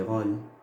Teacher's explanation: nous avons le O, et juste après, il y a le son, le L, n'est-ce pas? Mais j'ai mis le O fermé. J'ai pas mis le O ouvert.